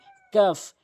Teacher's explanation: কাফটি হচ্ছে জিহ্বার গোড়া হতে একটু আগে বাড়াইয়া উপরের তালুর সঙ্গে